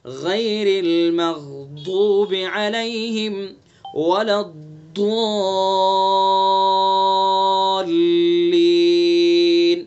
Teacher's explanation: غے نہیں پڑھنا ہمیں، غی پڑھنا